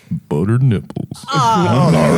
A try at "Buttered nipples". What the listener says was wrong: That was a little country. You had a little country twang.